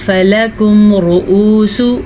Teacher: را کو پر پڑھنا ہے، را پہ پیش ہے